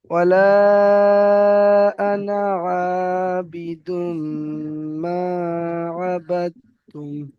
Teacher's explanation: তো এখানে যে আনাটা রয়েছে, এই আনাটায় টান হবে না